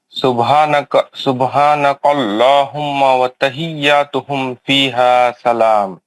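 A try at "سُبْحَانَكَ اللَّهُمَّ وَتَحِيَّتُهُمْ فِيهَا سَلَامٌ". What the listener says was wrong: माशाल्लाह।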